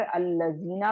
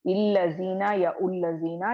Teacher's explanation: तो यहाँ पर आप देख रहे हैं कि अल्लज़ीना है तो अल आ रहा है वर्ड के स्टार्ट में, तो इसीलिए मैं क्या करूंगी, यहाँ पर जबर लगाकर अल्लज़ीना पढ़ूंगी, मैं इल्लज़ीना या उल्लज़ीना नहीं पढ़ूंगी